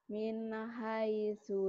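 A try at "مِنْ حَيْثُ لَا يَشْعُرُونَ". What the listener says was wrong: mina, mina, mina, mina. Min jangan ada mina. Min.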